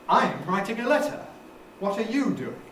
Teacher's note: special nucleus on i'm there because we've got the contrast with you